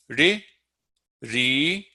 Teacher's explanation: The mouth does not change shape. And this ri, ri is a simple flick of the tongue against that alveolar ridge behind the top front teeth